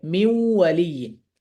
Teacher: তারপর হচ্ছে আহ নুন সুকুনের পরে ওয়াও, মিউ ওয়ালিয়িন, মূলত কি মিন ওয়ালিয়িন। তো একসাথে মিলিয়ে পড়লে তখন গুন্নার আশ্রয় নিয়ে মিলাতে হবে